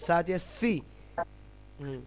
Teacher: জিহ্বার ডগা, সামনের জিহ্বার ডগা, সামনের উপরের দাঁতের আগা, জিহ্বার আগা, দাঁতের আগা হালকা স্পর্শ হবে